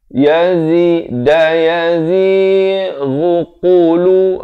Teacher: ghain makhrajnya di hujung kerongkong. Qaf pula di pangkal lidah.